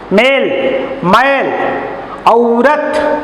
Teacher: मेल, मैल, औरत, औ के ऊपर ज्यादा बल दिया जाता है।